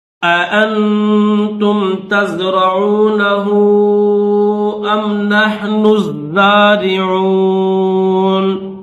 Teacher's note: نحنو میں جو نون ہے اس نون کو زا کے ساتھ ملا کر پڑھیں گے